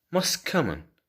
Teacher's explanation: T disappears and two words get linked together